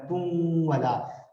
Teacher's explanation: ہونٹوں کو مکمل گول کرتے ہوئے نون کی ادھوری سی آواز آئے گی ناک کی طرف سے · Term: غنہ